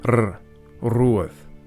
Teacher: In Old Gaelic, a broad R was generally trilled or rolled